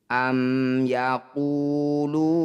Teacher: mim sukun bertemu selain mim dan ba disebut bacaan izhar syafawi bunyi mim baca jelas tidak usah dengung rapatkan bibir